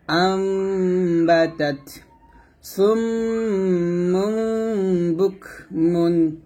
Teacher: এরকম ভাবে নুন সাকিন তানবিনের পর যখন কি আসবে, বা আসবে, তখন আমরা এখানে নুন সাকিনের জায়গায় একটু মিম সাকিনের ভাব নিয়ে গুন্নাহটা আদায় করব